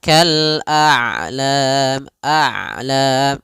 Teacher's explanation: Ain itu kedua-duanya tidak terlalu dialirkan tidak terlalu ditahan suaranya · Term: sifat bainiah, sifat bainiyah